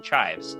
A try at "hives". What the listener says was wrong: you put on the under potato. No C. Hives.